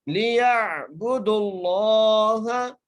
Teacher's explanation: لفظ اللہ کو موٹا کر کے پڑھنا ہے